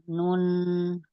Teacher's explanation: Di gusi atas. Ujung lidah menempel di gigi gusi atas. Hm. Ee melewati rongga hidung. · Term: huruf nun